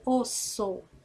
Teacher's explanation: o som é o mesmo é como se fosse só um s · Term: dígrafo